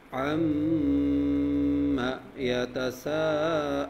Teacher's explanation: یتساءلون سین کو حروف مدہ ہے لمبا کرنا ہے 5 موومنٹ لمبا کرنا ہے عما یتساءلون غنہ کا مطلب ہے ناک میں آواز لے جانا